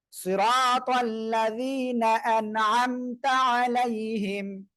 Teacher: আনআমতা আলাইহিম, আলাই, এখানে তাড়াতাড়ি পড়তে হবে, এখানে আইনটা গলাটা চেপে পড়বেন